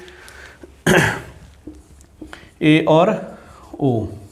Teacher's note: अर्ध संवृत, यानी कि थोड़ा सा मुख हमारा खुलेगा। जब हम इसका उच्चारण करेंगे, कि जब हम इनका उच्चारण करेंगे तो हमारा थोड़ा सा मुख है वो खुलेगा।